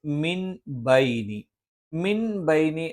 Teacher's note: പറയുന്ന സ്ഥലത്ത് സുക്കൂനുള്ള നൂനിനു ശേഷം ബാ വന്നു അത് ഇഖലാബ് എന്നാണ് പറയുന്നത് ഈ നൂനിനെ നമ്മൾ മീം ആക്കി മറച്ചു മണിക്കും